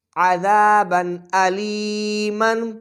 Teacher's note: عین زبر ع، ذال الف زبر ذا، عذا، با دو زبر بن، عذابا، حمزہ زبر آ، لام یا زیر لی، علی، میم دو زبر من، علیمن، عذابا علیما۔ تنوین کے بعد حروف حلقی میں سے حمزہ آ رہا ہے تو لہٰذا ہم یہاں اظہار کریں گے، غنہ نہیں کریں گے